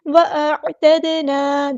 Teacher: دال ساکن پہ کلکلا ہوگا، الف مد آ گیا تو مد اصلی کریں گے.